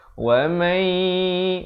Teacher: tapi di sini kita baca wa mayi masuk beserta dengung nama hukumnya Idgham Bighunnah masuk beserta dengung kadar panjang 2 harakat